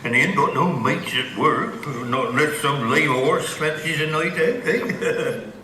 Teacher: the mouth diphthong sounds a bit more like the goat diphthong. So instead of being ow, it sounds like this.